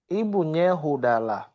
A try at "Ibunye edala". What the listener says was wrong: No, that is eda. Ibunye edala. Edala.